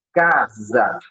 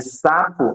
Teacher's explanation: essa letra S ela não tem o som de S, mas sim o som de Z. Aí você tem o fonema Z, casa, né?